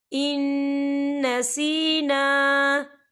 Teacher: نون ساکن کے بعد پھر نون آ رہا ہے اور نون جو ہے حروف یرملون میں سے ہے تو یہاں پر ادغام ہوگا اور ہم اسے غننے کے ساتھ پڑھیں گے